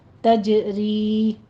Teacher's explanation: تجری میں بھی تجری نہیں کہنا، جیم کے اوپر حمس نہیں کرنی، جیم کے اوپر قلقلہ کرنا ہے قوی آواز کے ساتھ۔ تجری، یہ مدہ آگے کھینچنی ہے، 2 کاؤنٹ کرنا ہے۔